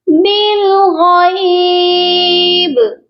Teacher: با ساکن ہوگا تو یہاں پر قلقلہ لازمی کیا جائے گا